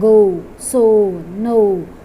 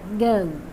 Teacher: after O we have to pronounce a very short U sound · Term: diphthong